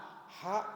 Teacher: Ha keluarnya dari tengah tenggorokan. Ha, sehah. Jangan ha.